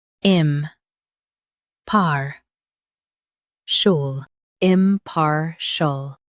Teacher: Stress par and keep shul soft.